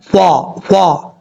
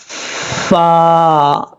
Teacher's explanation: فا کا مخرج ہے اوپر والے دانتوں کا کنارہ، جو اوپر والے دو سامنے والے دانت ہیں نا، ان کا کنارہ نیچے والے ہونٹ کی تری والی جگہ پہ لگے گا تو فا پڑھا جائے گا